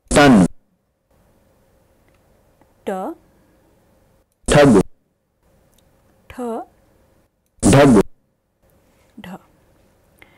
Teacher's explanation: retroflex sounds produced by curling the tip of the tongue in such a way that the back of the tip touches the alveolar region, the post-alveolar region.